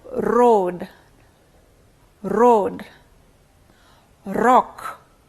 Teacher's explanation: The initial sound r is a trill, articulated with 2 stricture types, where we have complete closure and open approximation.